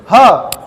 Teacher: ह अचानक से बाहर निकल गई, क्या है जी, स्वरयंत्र मुखी है।